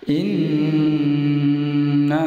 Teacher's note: nun tasjid ini dibaca jelas disertai dengung panjang 2 harakat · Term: gunnah